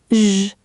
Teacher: Keep the tongue curled and tense and add a slight buzz, almost like the s in pleasure.